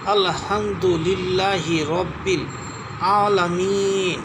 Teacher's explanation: আইন কণ্ঠনালীর মধ্য থেকে চাপ দিয়ে উচ্চারণ করতে হয়।